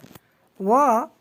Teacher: व वर्ण का उच्चारण स्थान दंतोष्ठ से होता है, जिसमें दंत और ओष्ठ भाग लेते हैं।